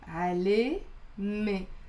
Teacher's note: notice how the alif and the te marbuta like are pronounced as a e here